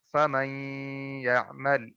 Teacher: دیکھیں ادغام ہم نے کیا کیا ہے, مرج کیا کیا ہے ہم نے, یا سائلنٹ کیا کیا ہے, اس نون ساکن کو ہم نے سائلنٹ کر دیا اور پیچھے والے حرف میم کے اوپر جو زبر ہے اس کو یا کے ساتھ ملائیں گے اور ساتھ میں غنہ بھی کریں گے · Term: ادغام بالغنہ